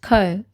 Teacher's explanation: examples of what this would look like for final consonant deletion are saying pi instead of pig and co instead of comb